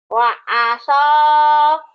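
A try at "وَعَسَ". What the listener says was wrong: Jangan wangaso ya. Wangaso. Jangan itu ya. Ngapak. Wa'ain. Wa'aso.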